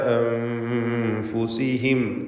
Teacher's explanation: ഈ പദത്തിൽ സാക്കിനത്ത് അനൂനിനെ ഇഖ്ഫ ഹഖീഖി നൽകി മറച്ച് മണിക്കണം. മണിക്കലിൽ തർക്കീഖാണ് വേണ്ടത്.